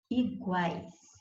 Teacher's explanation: Eu tenho um encontro vocálico formado por 3 fonemas, U, A, I. · você tem semivogal U, você tem semivogal I e você tem, então, 3 sons vocálicos na mesma sílaba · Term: tritongo